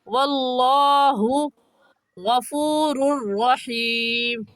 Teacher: लफ्ज़ अल्लाह को पुर यानी मोटा करके पढ़ेंगे। और मोटा करने का तरीका कि आपके दोनों होंठ गोल हो जाए।